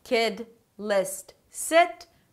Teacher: And the relaxed 'e' is usually spelled with the letter I, not always but usually. And the relaxed 'e' is somewhere between 'i' and 'e' in Spanish.